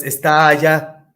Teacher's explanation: una tónica con una átona se convierte en una larga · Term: sinalefa